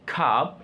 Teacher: a central vowel commonly used in stress syllables